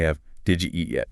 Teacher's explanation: >> Okay, step one, apply the D plus Y merger to the first two words. >> Did you crashes together and becomes didja.